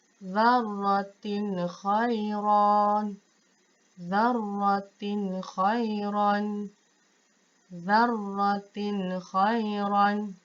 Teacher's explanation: Tanwin baris bawah ataupun kasratain bertemu dengan huruf kha. Tidak boleh dengung tetapi baca dengan jelas dan terang. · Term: izhar halqi